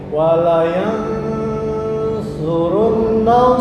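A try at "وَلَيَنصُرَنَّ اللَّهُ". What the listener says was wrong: surah. Walayan surah, bukan surun. Dengung ditahan 2 ketukan. Di mana nun gunnah?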